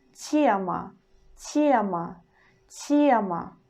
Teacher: consonant y disappears and it makes consonant before sound soft. So we pronounce it like тема, тема, тема.